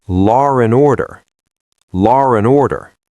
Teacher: It feels choppy, so we bridge the gap. We use an R sound to connect them. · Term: intrusive R